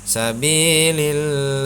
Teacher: lafaz jalalah dibaca tipis karena hukum bacaannya adalah muraqqaqah